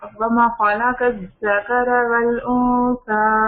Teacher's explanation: الف ہاں جو اس کو لمبا کریں، وما دو حرکتیں کریں نا